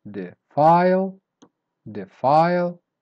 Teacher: Word number six, defile. So you start weak and then you go up